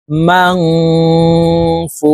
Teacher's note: নুন সাকিনের পরে ইকফার 15 টি হরফের যেকোনো একটি হরফ আসলেই এই নুন সাকিনকে নাকের ভিতরে লুকাইয়া গুন্নার সহিত পড়তে হবে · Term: ইকফা গুন্না